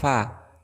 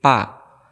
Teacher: fa termasuk huruf hamz, maka ada angin yang keluar, fa. Jangan sampai menyebut pa, tapi fasol fa.